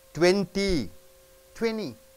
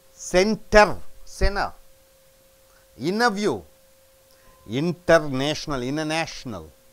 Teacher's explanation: T is silent after N with lax vowels.